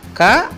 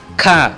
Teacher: క నేమో తేలికగా చదువుతున్నాము ఇంకో క నేమో ఖ అని ఒత్తి పట్టి చదువుతున్నాము